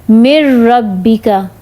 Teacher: جیسے کہ اب یہاں پہ آپ اگزامپل دیکھیں گے، ہم اس میں جیسے دیکھیں مر ربی کا، تو اس میں مر ربی کا میں کیا ہے، نون کو را سے نہیں ہم ملا رہے، نون جزم والا اس کو ہم نے چھوڑ دیا ہے، میم کو را سے ملائیں گے